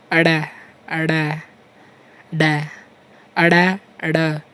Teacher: उत्क्षिप्त का अर्थ है फेंका हुआ या जाति से निकालना। वे व्यंजन जिनके उच्चारण में जिह्वा ऐसा महसूस करवाती है जैसे हम इन्हें फेंक रहे हैं, उत्क्षिप्त व्यंजन कहलाते हैं।